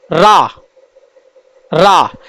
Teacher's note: रा को लुंठित व्यंजन और प्रक पित व्यंजन भी कहते हैं रा को जब हम बोलते हैं तो हमारी जीव जो है रा रा इसमें कंपन उत्पन्न होता है